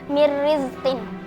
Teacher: Hukumnya idgham bila gunnah karena ada nun sukun bertemu dengan huruf ro, dibaca melebur tanpa mendengung